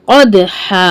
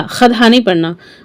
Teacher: फल मुरियात कद दाल पर साकिन है। यहां खलखला करेंगे। कदहा खद नहीं पढ़ना।